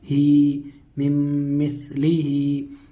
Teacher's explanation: ہا کے نیچے کھڑی زیر ہے، کھڑی زیر یا مدہ کے برابر ہوتی ہے، کھڑی زیر کو ایک الف کے برابر کھینچ کر پڑھیں گے